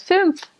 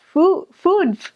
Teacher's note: that sound, ooh, with like an E on the inside and like an ooh on the outside